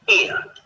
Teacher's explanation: So as you say ear, your mouth should open a little bit, starting on the I and finishing on the U